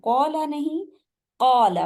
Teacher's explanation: آپ کے ہونٹ گول نہیں ہوں گے · زبان کا پچھلا جو پارٹ ہے نا حلق کے ساتھ ملا ہوا، وہ آپ کا جی اوپر اٹھے گا. اور زبان کا جو مڈ پارٹ ہے جو تالو کے سامنے ہے، آمنے سامنے، تو وہ نیچے ہو جائے گا. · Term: موٹے حروف